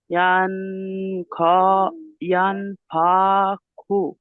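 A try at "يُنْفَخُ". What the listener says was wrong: এখানে ইয়ান হবে না, ইয়া পেশ ইউ হয়, তাহলে ইউন ফাখু, ফাখু টান হবে না, ইউন ইউন ফাখু। এখানে নুন সাকিনের ইজারাটা করেন।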